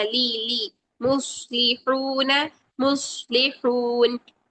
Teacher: मुस्लिहून, मुस, सौद मोटा रखेंगे, हा की आवाज ठंडी सांस से निकालेंगे। मुस्लिहून, लाम की जेर को ले नहीं बनाना है, मजहूल नहीं करना